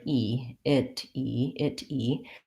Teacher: word e it E it e the problem there is that we don't actually say an aspirated with a puff of air T sound there we say it more like a D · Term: flap T